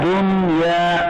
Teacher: इस नून साकिन में गुन्ना नहीं होगा, इग़ाम नहीं होगा, इसको इज़हार मुतलक से पढ़ेंगे बगैर गुन्ना के।